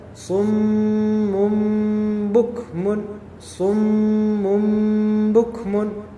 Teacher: Iqlab. Tanwin itu sebenarnya predikatnya nun. Tapi kemudian bertemu dengan ba. Maka iqlab diputar menjadi mim.